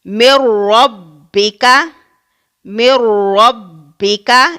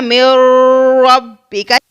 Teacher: ہم نے اس را کو غنہ کی شکل میں نہیں بلکہ بغیر غنہ کے ادا کرنا ہے۔ من ربک، اگر ہم یہاں پر غنہ کریں تو اس طرح سے پڑھا جائے گا من ربک، جو کہ اس طرح سے پڑھنا غلط ہے۔